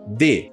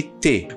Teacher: quando eu tenho a prega vocal funcionando é d quando eu tenho a prega vocal não funcionando é t